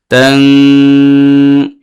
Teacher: এখানে নুন সাকিনের পরে কাফ আসছে, ইখফা হয়েছে, এই জন্য নুন সাকিনকে উচ্চারণ করতে হবে নাকের ভিতরে নিয়ে একালিফ গুণনা করে